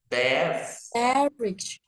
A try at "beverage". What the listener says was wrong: Đó sai rồi ha, âm của âm đầu đọc sai rồi, là beverage.